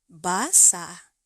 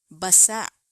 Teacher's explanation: There's a smooth vowel ending. No catch in the throat.